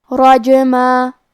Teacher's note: کلمت رجمن میں حرف الرا کا حکم ہے تفخیم، لہذا ہم حرف الرا کو موٹی آواز میں پڑھیں گے. کیونکہ یہاں جیم پہ جزم ہے لہذا ہمیں جیم کو قلقلہ سے پڑھنا ہے اور قلقلہ کا معنی ہے حرف ساکن کو ہلانا، لہذا ہم جیم کو ہلاتے ہوئے یہ کلمہ کو پڑھیں گے.